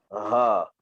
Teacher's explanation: Ha simpul, okey, dia adalah huruf yang 70% suara, 30% angin